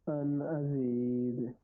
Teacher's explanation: اور ازی یا مدہ ہے اس لیے لمبا کیا. دال پہ قلقلہ کیا ہے ہم نے وقف کی صورت میں